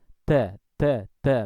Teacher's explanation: Hanya saja bedanya yang cadel tadi, dal yang cadel tadi itu, ya, ada hembusan udara yang banyak, ya, lumayan banyak, dan itu tentunya, ya, berbeda dengan huruf dal yang memang tidak boleh ada keluar udara melainkan sangat sedikit dan itu tidak dianggap atau tidak dihitung.